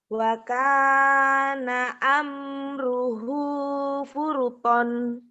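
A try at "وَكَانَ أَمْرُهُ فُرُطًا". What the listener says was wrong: Wa kana amruhu Furuto. Jangan furuton lagi kan dihentikan madiwa.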